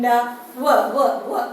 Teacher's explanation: While articulating ver, we can see the lips are rounding. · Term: semi vowel